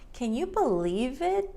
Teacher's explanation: The v, believe, connects to it, believe it. Can you, instead of can you, it goes straight from the N to the y.